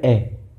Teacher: ए का उच्चारण करेंगे होठों की आकृति गोल नहीं होगी, अवर्ताकार है